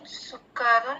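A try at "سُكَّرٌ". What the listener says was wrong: Ya, jadi sukarun itu ada sabdu di situ ya, sukarun, sukar. Maknanya kapnya ada 2.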